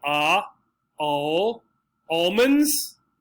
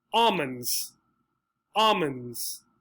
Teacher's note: the sound for the letter l all disappears in one of the pronunciations